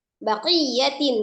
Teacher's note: Ya tasdid yang pertama hanya nabar saja, ditekan saja ya.